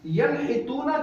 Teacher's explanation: ینحتون کے اندر نون ساکن کے بعد ہا حلق سے نکلنے والا آیا اس لیے اظہار کا قاعدہ ہوا